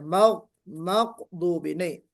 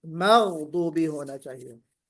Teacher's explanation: मगदूबी में गैन पर आपको थोड़ा सा गैन गैन निकालना है ना, और वहां पे कोशिश ये करना है कि काफ ना निकले। आपने जो पढ़ा उसमें काफ निकल आया, मगदूबी नहीं, मगदूबी होना चाहिए।